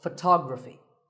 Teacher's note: the stress goes to the second syllable